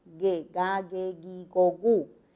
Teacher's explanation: Igual con el fonema velar, oclusivo velar sonoro